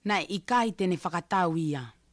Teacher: in negative sentences the ʻikai is the most prominent part. Like you can if you listen, she says it very very loudly.